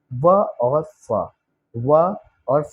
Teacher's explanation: व और फ, दांत और ओठ दोनों मिलकर ये बोलते हैं।